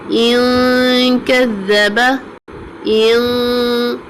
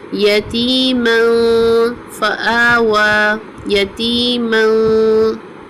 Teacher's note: And ikhfa we are doing hiding the sound of noon sakinah. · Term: light ghunnah